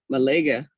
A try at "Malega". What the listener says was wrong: There you go, Malega. There it is.